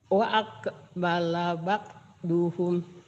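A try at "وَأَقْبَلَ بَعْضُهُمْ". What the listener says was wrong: Ibu masih bakduhum ya, jangan bak. Ba'duhum. Ba'duhum.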